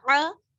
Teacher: کھڑا زبر ہے اس لیے تھوڑا سا کھینچیں گے, زیادہ نہیں, ایک الف کے برابر